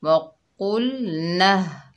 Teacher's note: हा सीने से अदा होगा